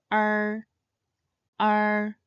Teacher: This compound final starts with the e sound and should end with a curled r sound